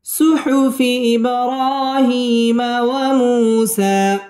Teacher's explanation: সুহুফি ইব বা কলকলার হরফ ধাক্কা দিয়ে পড়তে হবে। ইব র র খারা জবর র মধ্যে তবাই একালিফ টেনে পড়তে হবে এবং রটা পুর হবে।